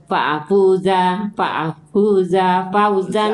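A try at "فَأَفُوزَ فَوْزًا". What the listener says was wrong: jangan panjang faafuza fau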